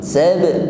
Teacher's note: sab ada ba bersukun maka tampak di sini sifat qalqalah, ada bunyi yang memantul sab, namun pantulannya ringan saja